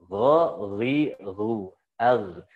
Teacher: Jadi ghain berarti kalau disukun ada masih sifatnya ada rokhwah. Itu kan kalau misalkan dipanjangin hurufnya akan ngalir terus kan gitu.